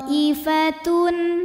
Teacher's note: Kemudian hamzahnya yang i pada kata thaifatun. Maka po dipanjangkan boleh 4 boleh 5 harokat. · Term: mad wajib muttasil